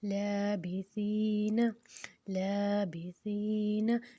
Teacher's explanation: اب جو سا ہے وہ نرم حرکت ہے، اوپر اور نیچے کے دونوں دانتوں میں زبان کی نوک کو رکھ کے ادا کریں گے تو یہ نرمی سے ادا ہوگا. اس میں ہم نے سیٹی نہیں کرنی اور اس کو 2 حرکت لمبا کرنا ہے.